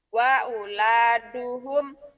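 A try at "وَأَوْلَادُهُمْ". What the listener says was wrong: Wa aula terbalik. Terbalik. Auladuhum.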